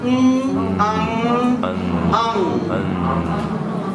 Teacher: The next sound is called ang, which is a nasal sound. There is a sound from the nose. Ang. And you will see that the sound is a with a nasal sound.